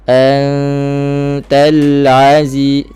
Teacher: ta jangan ca, jangan angin yang berlebihan. Kerana sifat hams pada huruf ta yang berbaris sudah ada masa kita sebut ta ti tu, angin tu dah ada dah secara semula jadi.